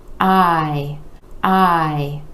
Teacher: we have the I vowel sound where that jaw is dropping down and coming back up